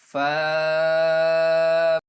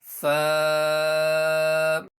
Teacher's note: फा का मखर ऊपर के दांतों के किनारे और निचले होंठ के तर हिस्से से अदा होता है · होठों का तर हिस्सा तर का मतलब होता है गीला हिस्सा तो जब ये ऊपर वाले दांतों के किनारे नीचे वाले होठ के तर हिस्से पर लगेंगे गीले हिस्से पर लगे तो फा अदा होगा